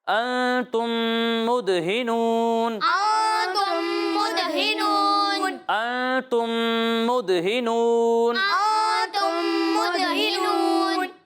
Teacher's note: تم میں بھی اور تم یہاں بھی غنہ ہو رہا ہے نا، تو دونوں جگہ آپ 1 الف کی مقدار تک ٹھہر کر غنہ کریں گے